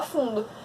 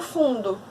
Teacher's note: A gente escreve ele com O, mas a gente pronuncia com U.